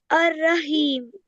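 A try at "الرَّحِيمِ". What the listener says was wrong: Ar-Rahim. या को लंबा करो. या मद्दा है ना ये. Is it या मद्दा? Why is it ya madda?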